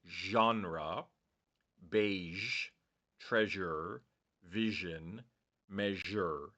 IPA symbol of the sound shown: ʒ